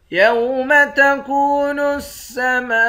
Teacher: میم کے بعد الف ہے، اس الف پر مد ہے، اس مد کو 5 الف کے مقدار کھینچ کر پڑھیں گے